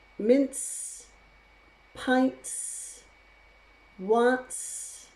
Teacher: you can't use a glottal stop if the word ends with s because ts makes its own sound